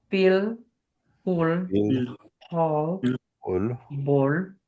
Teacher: They're going to keep that L right behind the front teeth. It's going to be the clear or light L.